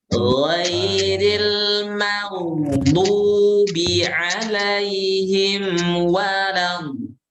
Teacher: Membaca dot jangan terputus suaranya, jangan walat do salah, tapi walat do karena dot itu sifatnya rohowah, bukan syiddah